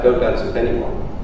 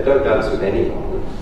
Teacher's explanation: this falling rising pattern implies that I would dance with somebody who's worth it